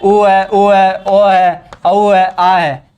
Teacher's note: जो ये पांचों स्वर है वो जीवा के पश्च भाग से बोले जाते हैं